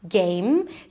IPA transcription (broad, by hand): ˈgeɪm